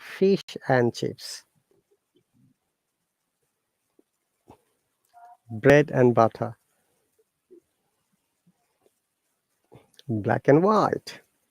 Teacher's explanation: if and is in between two words or two sentences, it should sound like an rather than and